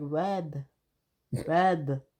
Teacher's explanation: You can hear the R, you can't hear the D when she says it.